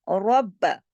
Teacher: آگے دیکھیے ربکم الذی، رب، اس میں دیکھیے را موٹا پڑھا جائے گا، کیوں؟ کیونکہ را پر زبر ہے